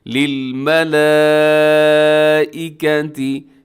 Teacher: یہاں پر بڑی مد ہے اور اس کو آپ نے لمبا کر کے پڑھنا ہے